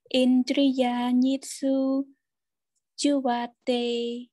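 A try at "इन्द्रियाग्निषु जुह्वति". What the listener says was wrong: Ti, juvati, yeah? Not te.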